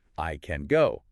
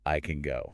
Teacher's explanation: The full vowel just vanishes and it's replaced by that quick clipped schwa sound. · If I'm speaking carefully and I stress the word, I'll say I can go with a full vowel sound in can. >> But if the stress is somewhere else in the sentence, that word becomes I can go.